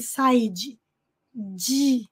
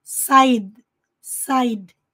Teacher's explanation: corte abrupto de ar para de fato não pronunciar o de não deixar escapar o de side side e